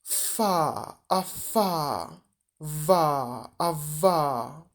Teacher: Spółgłoski labiodentalne, wargowo-zębowe, labiodental, na styku wargi dolnej i zębów górnych.